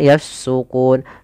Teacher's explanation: Panjangnya boleh 2, boleh 4, boleh pula 6 harokat. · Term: mad arid disukun